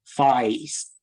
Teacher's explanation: And in this older London speaker, we see face starting with a low central sound like ah, and then raising up over its production toward a target that would sound like E. So we get something like face, which is traditionally a Cockney pronunciation. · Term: traditionally a a cockney pronunciation